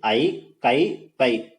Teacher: ஐகார எழுத்து வந்து தனித்து வர்றப்போ தனக்குரிய இரண்டு மாத்திரை அளவுல முழுமையா ஒலிக்கும் அப்படின்றதை சொல்றாங்க இது வந்து ரொம்ப முக்கியமான பாயிண்ட் அதே மாதிரி ஐகாரம் வந்து